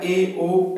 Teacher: अर्ध संवृत यानी आधा मुह खुलता है